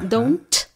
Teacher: Es como que sale con mucho aire, como la T del inglés, que don't, ese sonido es aspirado.